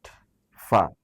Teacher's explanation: উপরের দুই দাঁত, নিচের ঠোঁটের পেট, ফা, এটি ঠোঁট থেকে উচ্চারিত হয়। উপরের ঠোঁট সেখানে একটা কাজ করে না।